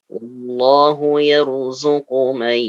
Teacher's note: Nun sukun bertemu dengan ya, hukumnya idgham bi gunnah. Jadi ditahan 2 harakat.